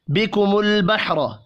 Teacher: لام ساکن پر قلقلہ نہیں کریں گے، را کو زبر کی وجہ سے پر پڑھنا ہے۔